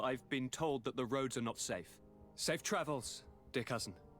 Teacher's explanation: she pronounces almost every letter glottally in the back of her throat. She rolls every R.